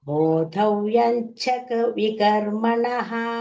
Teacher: ಚ ಇಸ್ ಅಲ್ಪಪ್ರಾಣ ಬೋಧ is ಮಹಾಪ್ರಾಣ